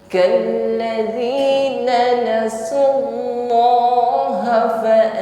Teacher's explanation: mengucapkan nun sukun samarkan pada huruf sin, diiringi dengan bunyi dengung, dengungnya tipis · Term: ikhfa